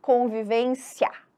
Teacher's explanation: o I ele quase some na hora da fala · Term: ditongo crescente